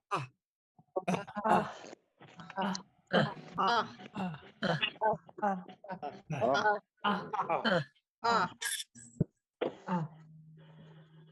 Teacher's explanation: it's very, very short and abrupt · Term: Single A